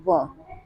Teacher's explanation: दांत से भी उच्चारित होता है और ओंठ से भी, यानी 2 जगहों से इसका उच्चारण होता है, दंत प्लस ओष्ठ से, तो वो एक है सिंगल हमारा वर्ण व।